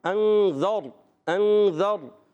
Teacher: ذال کے بعد را ساکن ہے، را ساکن سے پہلے زبر، را پر کریں گے، موٹا کریں گے۔ انذر، انذر، بہت زیادہ انذر، ایسا بھی نہیں، بہت زیادہ نہیں، نارمل پر کریں گے، ٹھیک ہے۔